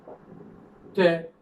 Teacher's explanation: We use the tip of the tongue with touching the ridge. So this is called alveolar.